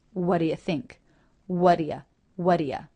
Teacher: it's even more casual and the t is dropped all together